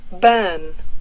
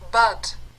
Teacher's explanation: 여기서 R이 생략된 곳에서는 그걸 보상하기 위해서 비교적 길게 발음한다